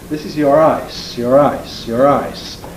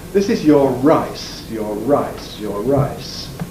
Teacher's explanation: even with intrusive R, it doesn't quite sound quite the same as an ordinary R